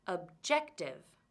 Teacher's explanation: word objective how many syllables does this word have objective 3 can you hear which syllable is stressed objective it's the second syllable